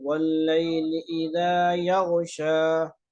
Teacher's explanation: یہاں پہ غین کی جگہ خا نہیں پڑھنا ہے